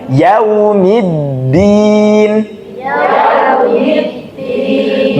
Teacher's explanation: Dal sama makhrajnya dengan huruf th dan ta Nggih maka lidahnya jangan sampai kelihatan